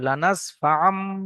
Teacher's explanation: তানবিনের আওয়াজকে মিম সাকিন মিমের সঙ্গে পরিবর্তন করে পড়তে হবে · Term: ইকলাব